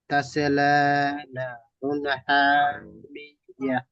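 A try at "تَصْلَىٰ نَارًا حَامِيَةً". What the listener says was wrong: নারন, না আলিফ মাদ্দা একালিক টান দিয়ে পড়তে হবে।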